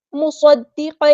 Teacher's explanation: قاف ہمارا heavy letter ہے پورا ادا کریں گے، مصدقا لما، صاد ہمارا ہیوی لیٹر ہے پورا ادا کریں گے، حروف صفیریہ میں سے ہے تو سیٹی بھی آئے گی